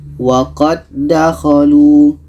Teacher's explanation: Karena ini idgham mutamathilan. Jadi dal yang pertama kita masukkan ke dal yang kedua.